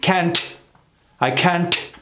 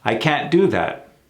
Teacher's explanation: What you notice Americans do is not mention the T at all.